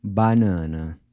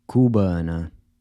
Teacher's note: both “a”s are pronounced /ɐ/ as in “Cuba”.